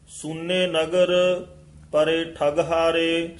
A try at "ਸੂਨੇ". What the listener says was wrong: ਸੂਨੇ ਇਹ ਦਰੈਂਕੜ ਨਾਲ ਸੂਨੇ ਨਹੀਂ ਕਹਿਣਾ ਸੂਨੇ ਨਗਰ ਇੱਥੇ ਵਿਸਰਾਮ ਹੈ ਪਰੇ ਠੱਗਹਾਰੇ ਵੀ ਪਾਠ ਕਸ ਕੇ ਉਚਾਰਨ ਕਰਨਾ ਇਕੱਠਾ ਹੀ ਹੈ